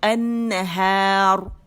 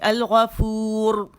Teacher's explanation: وقف کی صورت میں اگر رو ساکن کرے ہم اور اس سے پہلے الف مدہ آ جائے تو تب بھی رو موٹی, النہار. اور اگر وقف کرے اور واو را ساکن اس سے پہلے واو مدہ آ جائے تو تب بھی را موٹی, جیسے الغفور.